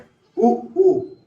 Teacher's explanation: देखिए जब आप उ बोलते हैं तो आपको होंठों को गोल करना पड़ता है। उ यानी होंठ से, होंठ को इसमें प्रभाव पड़ रहा है होंठ पे। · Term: ओष्ठ